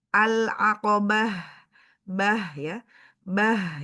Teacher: ta marbut ketika di kita ingin wakaf berubah menjadi ha sukun ya tapi kalau kita mau wasal mau lanjut dilanjutkan ke ayat ee berikutnya tetap dibaca menjadi ta ya kalau wasol dibacanya falaqal gitu ya.